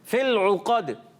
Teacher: قاف عرف قلقلہ بھی ہے، عرف مستعلیہ بھی ہے. مستعلیہ ہونے کی وجہ سے اس کو پر یعنی موٹا پڑھیں گے